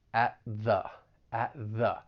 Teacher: There are some overlapping sounds, and this is basically when your tongue is in the same position. So at, your tongue is going to come up and block the air with that stop T, but then you're just going to release right into that voiced TH